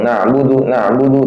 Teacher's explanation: Ain makhrajnya tengah tenggorokan. Nah, dan dia sifatnya salah satunya itu apa? Tawasud tengah-tengah antara syidah dan rakha masih jalan sedikit satu harakat caranya.